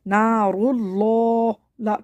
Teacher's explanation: لام کو موٹا پڑھیں گے لفظ اللہ کے ، اور کیونکہ اس سے پہلے پیش ہے، نار اللہ، کھڑے